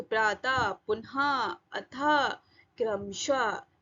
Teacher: तो विसर्ग इसका उच्चारण आधे हा जैसा होता है।